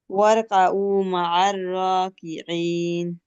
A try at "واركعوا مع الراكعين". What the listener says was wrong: عين একটু টান হবে واركعوا مع الراكعين